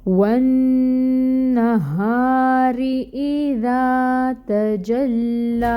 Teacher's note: فتحہ کے لیے حرکت 1 کاؤنٹ ادائیگی، اور نون مشدد ہے، غنہ ہوگا، غنہ کی مقدار ہوگی 2 کاؤنٹس کے برابر، اور یہ جو فتحہ کی حرکت ہے یہ 1 کاؤنٹ ادا کی جائے گی۔ · ہا اقصی الحلق سے ادا ہوگا